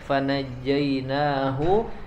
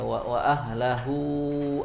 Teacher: Hu yang pertamanya pendek, fanajjainahu, ya, selanjutnya hu yang keduanya panjang, ya, wa ahlahu, di situ panjang.